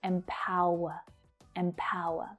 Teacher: And that final syllable is unstressed. It's the schwa sound, and you don't hear me say that Empower, empower.